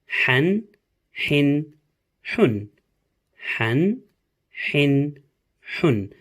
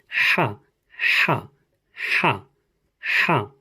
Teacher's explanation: It is a sharp H coming out of your vocal cords.